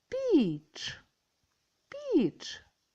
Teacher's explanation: наступне слово піч піч перший звук п другий і третій- ч перший звук пом'якшений М'який приголосний